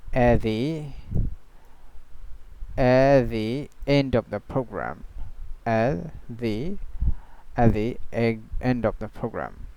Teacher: So he didn't pronounce the T. So T, it was completely silent here. So at the end of the program, and also it's not a glottal T.